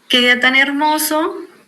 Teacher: el tono se eleva y se enfatiza para mostrar emoción. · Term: exclamaciones